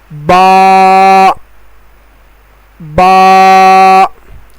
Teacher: با کا حرف دونوں ہونٹوں کے گیلے حصے سے ادا ہوتا ہے